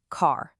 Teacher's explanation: Notice how your mouth naturally opens wider and the sound is extended. It's pulled out longer and deeper. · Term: long a sound